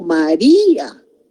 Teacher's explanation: No son dos sílabas, son tres sílabas porque el acento está recayendo en la I y la primera sílaba sería ma, la segunda sílaba sería di y la tercera sílaba a.